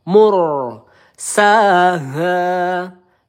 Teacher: ro sukun ya sebelumnya harakat domah kita baca tebal ya